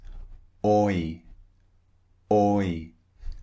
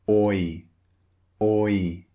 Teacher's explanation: It starts round and it finishes slightly wide.